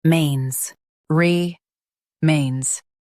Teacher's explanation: Stress mains and keep re soft.